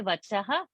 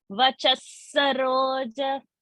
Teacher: because the next word is sa, the visarga is becoming sa. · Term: Visarga sakara